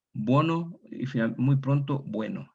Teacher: La O tónica abierta, diptonga primeramente en wo, y muy pronto en el caso del castellano, a diferencia de los otros dialectos que fueron más tardes, evolucionó a we.